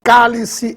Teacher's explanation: se trata de uma palavra proparoxítona, pois a sílaba tônica está na antepenúltima